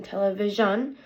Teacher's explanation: The place is roof of your mouth. The manner is fricative, and it is a voiced sound.